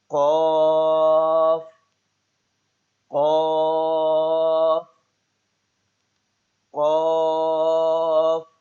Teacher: زبان کی جڑ کا آخر جو کوے کے پاس ہے، جب اوپر کے تالو سے لگے